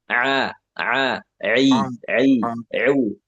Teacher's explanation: Ain dari tenggorokan tengah.